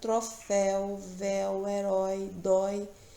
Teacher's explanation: porque são oxítonas a última sílaba é a mais forte